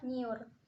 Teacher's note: Konsonan nasal palatal bersuara, yaitu N. Seolah-olah terdiri atas dua bunyi, N dan Y, tapi kedua bunyi ini luluh jadi satu